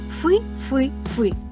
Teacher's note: співає свою пісню Без інтонації рівно